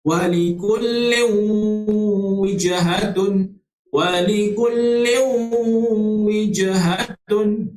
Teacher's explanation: Sambil-sambil kita nak memasukkan bacaan kita daripada huruf lam yang tanwin itu, nak pergi ke huruf waw, kita kena dengung. Kena dengung dua harakat.